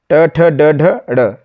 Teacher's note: तो ड का उच्चारण स्थान है मुर्धन